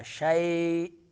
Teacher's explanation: یا لین، شَيْء لمبا کرنا ہے تھوڑا سا